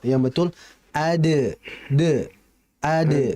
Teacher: jadi dalnya ditipiskan jangan nyerupai seperti dod